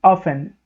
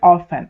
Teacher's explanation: O que acontece aqui é que o T fica omitido